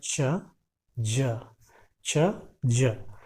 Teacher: एफ्रिकेट consonant sounds में air flow को, हवा को हम अपने मुंह से धीमे धीमे आहिस्ते से रिलीज करते हैं। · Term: एफ्रिकेट साउंड्स